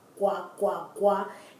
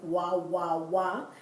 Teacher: You know, when it's G-U, it's, as example, agua, gua, gua, gua. If it's followed by what is called a hard vowel, that U becomes a W sound